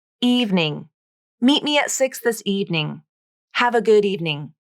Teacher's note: The middle E is dropped from the pronunciation, and evening is pronounced as 2 syllables.